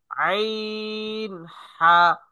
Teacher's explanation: দুই নাম্বার মাখরাজ, হলকের মধ্যখান হইতে আইন হা